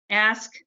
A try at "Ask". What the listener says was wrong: Here, I'll try to correct the last name pronunciation is Osk, so it's kind of like Osmus.